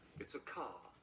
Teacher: So cutting out this R before a consonant. And Brits don't say the R at the end of words like car.